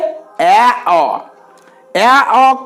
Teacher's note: অ্যা কে বলা হয় নিম্নমধ্য বা অর্ধবিবৃত স্বরধ্বনি নিম্নমধ্য বা অর্ধবিবৃত স্বরধ্বনি নিম্নমধ্য কেন কারণ নিচের ঠিক ওপরে রয়েছে